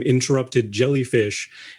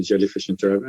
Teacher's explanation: but when I thought about it, the reason that it rolls off the tongue a little bit better is because jellyfish, it ends with a softer sound, like a non-consonant sound, and then interrupted, it starts with a vowel sound, so they sort of blend together better. Whereas interrupted ends with a consonant, and then jellyfish starts with a consonant, so they sort of butt up against each other instead of kind of blending together.